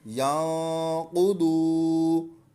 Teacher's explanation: واو مدہ کو ہم ایک الف یعنی 2 حرکات کے برابر کھینچ کر پڑھیں گے۔